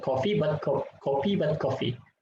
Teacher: labiodental sound f is pronounced as bilabial p